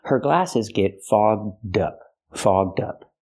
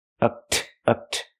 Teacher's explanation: We have to use the open vowel aw and the voiced g and d, fogged up. To help with pronunciation, link the d sound to the second word up, so you have dup.